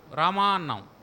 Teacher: రామా అని పిలిచినప్పుడు రాలో ఉండేటువంటి ఆ దీర్ఘం, మాలో ఉండేటువంటి ఆ దీర్ఘం కాదు, అది ప్లుతం. ఎందుకంటే రాలో ఉండే ఆ కంటే మాలో ఉండే ఆని ఎక్కువ సమయం పలుకుతాం కాబట్టి, ఆ స్పాన్ ఆఫ్ ప్రొనౌన్సియేషన్ ఎక్కువ కాబట్టి దాన్ని ప్లుతము అంటాం.